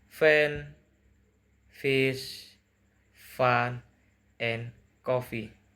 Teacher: voiceless labio dental fricative